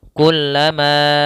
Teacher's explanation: Setiap kita mendapati kata seperti ini ada mad tabi'i bertemu hamzah pada lain kata, maka kita hukumi dengan bacaan namanya mad jaiz munfasil. Cara membacanya kita panjangkan 4 harokat dalam riwayat Hafs an Asim yang biasa kita baca. Kullama, ya, kita panjangkan 4 harokat.